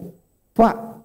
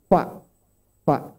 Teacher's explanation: Jadi fa itu 1 bibir. Bibir bawah bagian dalam ketemu dengan gigi atas seri.